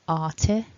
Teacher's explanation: at the beginning we've got a nice long R vowel and then T, so running that through together, arti.